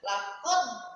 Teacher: Laqad itu namanya qalqalah kubro. Jadi harus jelas qalqalahnya.